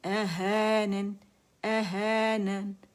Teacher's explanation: الف صغیرہ ہا کی آواز کو ہے کر کے کھینچیں گے، ہو نہیں کریں گے